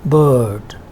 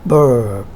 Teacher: GA speakers or General American speakers utter R in words such as these, while RP speakers do not. So RP speakers would not pronounce this medial R, and they would say bird, and the American would say bird.